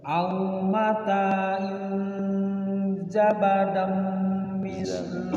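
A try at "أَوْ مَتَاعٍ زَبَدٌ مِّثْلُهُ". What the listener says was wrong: Zabadum pakai u.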